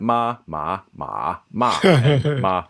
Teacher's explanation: the choice of little melody changes the meaning of the syllable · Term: contour tone